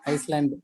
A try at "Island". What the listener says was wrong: It's not called Iceland. Island ಅಂತ ಕರೀತಾರೆ. Island. Iceland ಅಲ್ಲ. S silent ಆಗ್ಬಿಡತ್ತೆ. Island ಅಂತೆ.